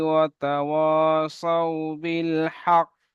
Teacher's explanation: অফ করলে বা দাঁড়ালে শেষে কল করার একটা আওয়াজ আসবে হালকা কফের মাখরাজে ধাক্কা লেগে একটা আওয়াজ দ্বিতীয়বার একটা আওয়াজ আসবে